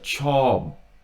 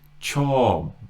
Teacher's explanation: You're kind of going from the B to the P, but you're stopping just as you hit the P.